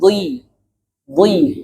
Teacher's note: ketika harokat kasrah, kadar ketebalannya berkurang, makanya bunyinya dhi, dhi, bukan di. Nah, itu jadi dal, tapi dhi.